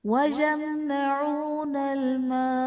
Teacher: اور وقف کی صورت میں نون ساکن ہو جائے گا تو یہاں پر مد عارض کا قاعدہ ہوگا